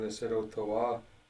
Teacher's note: the stress changes to the long vowels at the end instead there